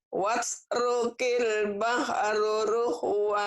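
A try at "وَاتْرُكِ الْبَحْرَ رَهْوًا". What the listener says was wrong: Bahro bukan bahru. Watrukil bahro. Watrukil bahra rahwa.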